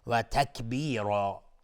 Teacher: را اینجا مفخم هست یا غلیظ تلفظ میشه چون تنوین نصب میشه و الف هم تابع را غلیظ تلفظ میشه. تکبیرا مد عوض از تنوین.